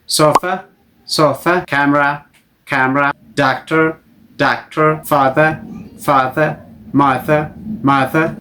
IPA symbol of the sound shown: ə